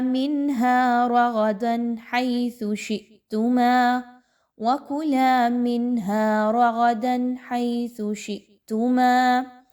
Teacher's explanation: نون ساکن کے بعد ہا ہے تو اس کو بھی بڑا نون کی آواز کو کلیئر اظہار کر کے پڑھا جائے گا